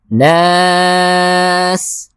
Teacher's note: اور سین میں سیٹی کی آواز نکالنا ضروری ہے